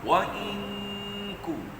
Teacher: Bila tuan-tuan dengung itu, kita punya pangkal lidah tu menyentuh langit-langit keras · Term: nun bertemu kaf